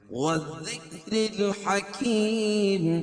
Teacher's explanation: ذال باریک اور را بھی باریک پڑھی جائے گی، کیوں؟ اس لیے کہ را کے نیچے زیر ہے۔